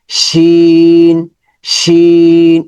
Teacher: কোরআন থেকে হরফগুলো দেখে বুঝতে পারবোশিন শিনের মাখাল হচ্ছে জিহবার মধ্যখান জিহবার মধ্যখান উপরে তালুর সাথে মানে তালুর দিকে চলে যাবে